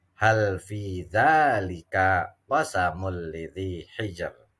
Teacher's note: Qasamun tanwin ketemu lam. Ini dinamakan idgham bila gunnah.